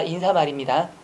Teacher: 니은 첨가가 될 것 같은데 안됩니다